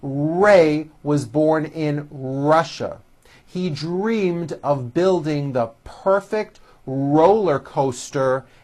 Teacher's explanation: notice how my lips come forward on all my RS and W's